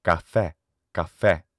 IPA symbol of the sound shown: ɛ